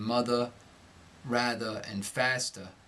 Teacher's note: when ERR occurs in an unstressed syllable, such as in mother, rather, and faster, the R will be entirely dropped